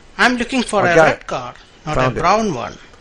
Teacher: In these examples, when you're using what's called contrastive stress, when you present two different ideas, the first idea has rising tone and the second one has falling tone.